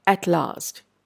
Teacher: At last, the L, you can notice the vibration of the vocal cords is distinctly reduced when you place your fingers over the throat to observe the voice or voiceless quality. · Because of the influence of the T that comes before it. T is a voiceless consonant. So, L also becomes more of a voiceless sound. In other words, a better word to describe that would be a devoiced sound.